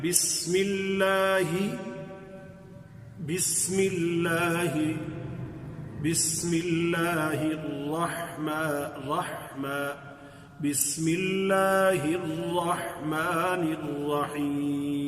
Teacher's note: اس ہا کو ذرا تھوڑا سا باریک کر کے پڑھیں گے، یعنی آواز تھوڑی سی اس میں بھاری پن نہیں ہوگا